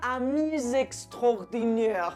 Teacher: Aquí sí se pronuncia esa S porque la siguiente palabra empieza por vocal. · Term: liaison